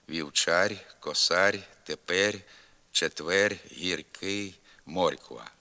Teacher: у багатьох Карпатських говорах звук р вимовляється м'яко на кінці слова і складу